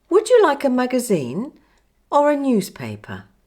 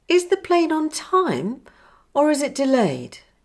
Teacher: My voice rises on the first alternative and falls on the second.